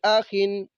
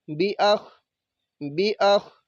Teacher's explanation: با زیر بی، حمزہ زبر آ، بی آ، خا دو زیر خن، بی آخن، بی آخن۔ تو وقف کریں گے تو خا کو ساکن کریں گے